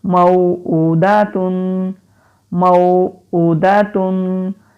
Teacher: میم زبر واو مو، حمزہ الٹا پیش او، دال زبر دا، تا دو پیش تن. الٹا پیش ہے، اس کو ہم ایک الف کے برابر لمبا کریں گے. واو سے پہلے زبر ہے، حروف لین ہے، اس کو کھینچیں گے نہیں.